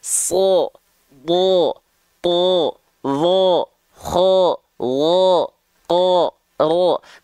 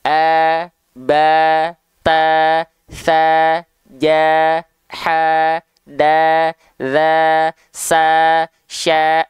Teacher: ketika fathah bunyi vokalnya akan condong ke vokal o Kenapa karena mereka adalah huruf yang tebal